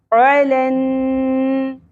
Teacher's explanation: عین وسط حلق سے عین کا مخرج